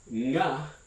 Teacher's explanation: the velar nasal or dorsal nasal, which is very hard to distinguish for English speakers at the beginning of a word